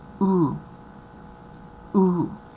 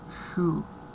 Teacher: This one is low, rounded, tense, long, and the example that we have is shoe